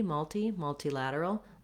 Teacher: we have a little bit of secondary stress here on the mul syllable · In both of those, multilateral, I do tend to use that aspirated T